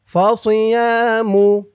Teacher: সদের উচ্চারণটা খেয়াল করবেন, সি বলা যাবে না, সি বললে সিনের উচ্চারণ হয়ে যাবে।